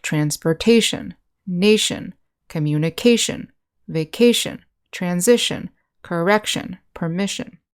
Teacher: the accent is usually on the syllable right before the ending so transportation nation communication vacation transition correction permission in the next · we have the suffixes tion and sion which are pronounced shin